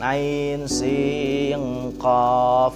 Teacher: ada yang baca ain sin qaf karena sinnya langsung dimasukkan atau ikhfakan ke huruf qaf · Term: ikhfa ab'ad